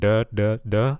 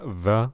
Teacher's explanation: you want to make like a z sound but like with your tongue between your teeth